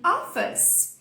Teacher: esse O aberto, você vai fazer o O de avó, de forró